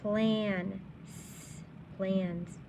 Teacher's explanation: this is a more nasal sound it's called a honking a that's because it's more in your nose